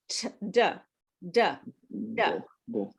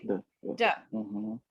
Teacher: your mouth is relaxed and the tip of your tongue touches the back of your front teeth. And you use your voice. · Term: d sound